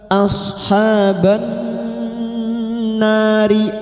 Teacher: lam takrif yang tidak bersukun masuk pada huruf nun dan mendengung selama tiga harakat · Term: idgham syamsiyah